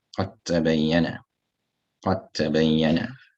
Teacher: So you have a dal over here, which has the makhraj of the tip of the tongue touching the gum line of the two central incisors. It meets a ta, which has exactly the same makhraj. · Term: mutajanisan